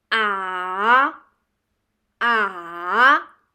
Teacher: the third tone is a little tricky one so your voice goes down and up